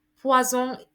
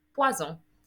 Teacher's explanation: vowel sandwiching your S, making it sound like a Z